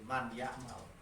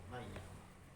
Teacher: Nu kitu ngaranna idgham. Sora nun diasupkeun kana iya sehingga eueuh sora nun